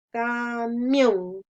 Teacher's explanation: sílaba tónica es la última